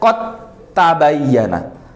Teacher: Makhrajnya langsung masuk ke makhrajnya ta dan suaranya langsung menghasilkan suara ta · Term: idgham